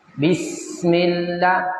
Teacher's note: Sifat huruf sin ada sifatnya hams.